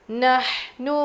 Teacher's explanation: ہا کی آواز حلق سے